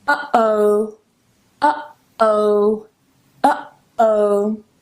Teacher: I'm closing my vocal cords here, or vocal folds, okay? I'm closing them here just for a second. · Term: glottal stop